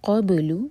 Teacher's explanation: با پر قلقلہ اور قاف ہیوی